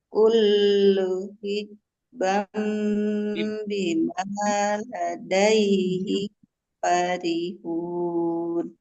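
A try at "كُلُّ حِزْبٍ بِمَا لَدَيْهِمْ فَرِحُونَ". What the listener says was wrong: Hizbim, bukan hizbam ya. Panjang pendeknya.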